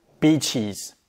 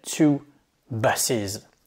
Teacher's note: Et ce ES va se prononcer is.